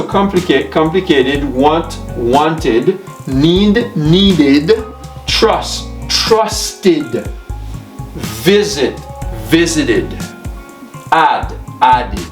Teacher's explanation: why whenever the regular verbs see ends in t n d The Ed ending is pronounced as a separate syllable